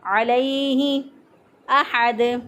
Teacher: جلدی سے ادا کریں گے، لمبا نہیں کریں گے، علیہ احد، ہا کو وسط حلق سے ادا کیا